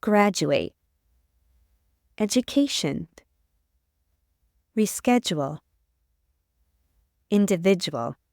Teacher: in a North American accent du can sound like J or J in unstressed syllables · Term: j sound